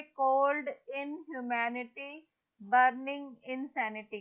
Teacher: कोल्ड is stressed, इन is unstressed, ह्यू is unstressed